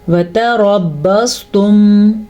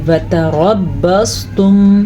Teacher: وتربصتم را کو پر پڑھیں گے کیونکہ را کے اوپر زبر ہے. تا کو باریک ہی پڑھیں گے کیونکہ یہ تا ہے، توا نہیں ہے. اگر اس کو وتربصتم پڑھ لیا تو یہ تو توا بن جائے گی.